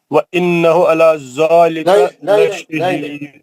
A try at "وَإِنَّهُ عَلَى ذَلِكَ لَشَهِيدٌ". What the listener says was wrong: وَإِنَّهُ عَلَى ذَلِكَ لَشَهِيدٌ. غنہ کریے نا وَإِنَّهُ کا. آپ گھر میں بیٹھ کے قرآن پڑھ رہے ہیں، تلاوت کر رہے ہیں، میں وہاں آ کے بولوں گا غنہ نہیں کر رہے آپ یہاں پہ غنہ چھوڑ دے رہے بول کے کون بولے گا وہاں کے؟